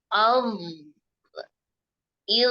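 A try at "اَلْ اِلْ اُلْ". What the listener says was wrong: Hati-hati ketika dialirkan, jangan ada tawalut di akhir. Nah, ini hati-hati ya. Berarti masih ditarik, lidahnya masih ditarik. Jadi ketika dialirkan, biarkan nempel terus ya ujung lidahnya ini di ujung gigi. Jangan ditarik ya. Il. Ul.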